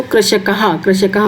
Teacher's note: तो ख पाठ से पहले प्रश्न के ख पाठ से शुरू कर रहे हैं किणि दृष्ट्वा पदानी उच्चारयत कृषकाह ब्रशभा भल्लुकाह यहां पर विसर्ग है। विसर्ग का उच्चारण ह की तरह से होता है